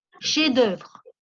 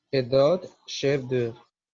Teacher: La F no se pronuncia